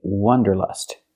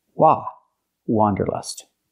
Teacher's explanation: we cannot use the short H sound like cup and up we have to use the open a sound